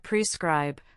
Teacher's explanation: It sounds like prescribe with the stress on the second syllable.